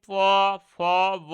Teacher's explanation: ঠোট ঠোটের সাহায্য নিয়ে এই ব্যঞ্জন ধ্বনিগুলো উচ্চারিত হচ্ছে তার জন্য এবার ঠোটের ভালো নাম হচ্ছে ওষঠ তার জন্য এগুলোর নাম হচ্ছে ওষ্ঠ ব্যঞ্জন ধ্বনি।